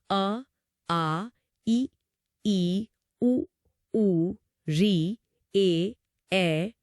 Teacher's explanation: हमारे होंठ, जीभ या दांत उस हवा के रास्ते को कहीं भी ब्लॉक नहीं करते। कहीं कोई रुकावट पैदा नहीं करते। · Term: स्वर